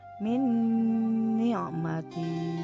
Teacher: Selanjutnya nun sukun, min ni'mati, nun sukunnya gabung dengan nun hidup ya, nun mati masuk ke nun hidup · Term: idgham biguna